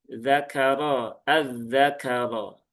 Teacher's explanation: Kemudian ini roknya tebal ya, tafkhim, zakaro, az-zakaro.